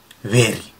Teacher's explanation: जब हम वेरी बोले तो हमारे होठ दांत से चिपके हुए होने चाहिए और हल्का सा वाइब्रेशन निकले